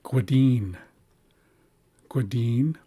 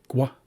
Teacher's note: the small raised W means that this is a rounded G, gwa. And then this is the hybrid equivalent of Gwadine, which means scotter or scoter.